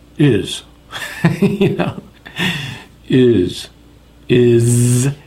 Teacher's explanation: it's a z it's a buzzing